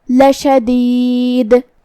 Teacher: کلمت لشدید میں آخری میں ہم دال پہ روکیں گے تو اس پہ جزم سے روکیں گے، تو یہاں دال کا حکم ہوگا قلقلہ، تو ہمیں دال کو ہلاتے ہوئے یہ کلمہ کو ادا کرنا ہے